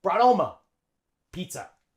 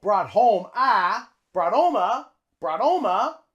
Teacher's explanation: we drop the H and Link it on with the T